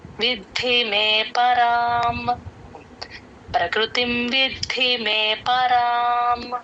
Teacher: ద కింద ద వత్తు మహాప్రాణం